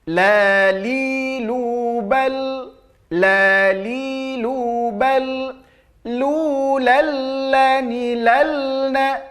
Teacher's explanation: ada sifat inhiraf pada huruf lam, yaitu memalingkan lidah baik ke kiri ataupun ke kanan supaya ia tak terpantul